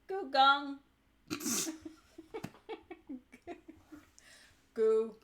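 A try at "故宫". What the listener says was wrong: No, that was a low tone. Okay, so Chinese has 4 tones. They have the rising tone, the high tone, the low tone, and the falling tone. This is the falling tone, in which it's pronounced goo. It's not goo. It's not goo. It's not goo. It's not goo. I mean, it is goo. That's what it is. Goo. This is the high tone. Gong. is actually the first tone.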